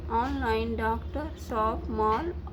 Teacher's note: यह आ व ओ के बीच की स्वर ध्वनि है